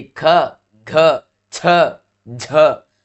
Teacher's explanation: ह जैसी ध्वनि सुनाई देती है वहां महाप्राण होते हैं। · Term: महाप्राण व्यंजन